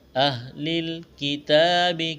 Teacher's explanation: کاف اور تا کو باریک کرنا ہے، تا کے اوپر کڑا زبر ہے، ایک الف کے برابر کھینچنا ہے